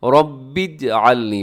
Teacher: رب اجعلنی، با کو جیم کے ساتھ ملانا ہے